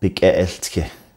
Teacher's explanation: the glottal stop for the transitive verb will appear in the object prefix position